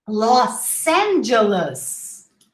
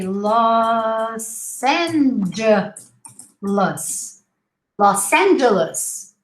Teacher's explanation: make sure you pronounce double S instead of a Z, because in Portuguese, whenever we have a vowel sandwich, a vowel plus the S and a vowel again, the S becomes a Z sound.